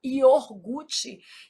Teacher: O R é aqui, a gente às vezes desloca esse R, fala iorgute. Isso é um erro de ortoépia.